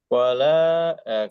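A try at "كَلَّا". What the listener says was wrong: হ্যাঁ, ক টান দে।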